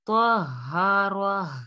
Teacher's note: last میں بھی ہا کی آواز واضح ہوگی